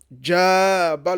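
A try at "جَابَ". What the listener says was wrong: On tire, hein, c'est pas Jaba.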